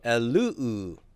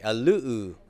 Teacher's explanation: that sigma is now intervocalic, and so it's going to drop out, and the epsilon omicron will contract.